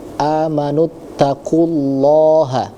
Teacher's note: di sana ada lafaz Allah, kemudian sebelumnya itu berharokat dhammah, maka di situ harus dibaca lebih tebal lagi, ya, lam tafkhim namanya.